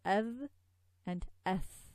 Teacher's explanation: This is a tha with the tongue out.